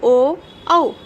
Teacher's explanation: कंठ से आवाज आ रही है और ओष्ठ भी हमारे होठ भी क्रिया कर रहे हैं। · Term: कंठोष्ठ्य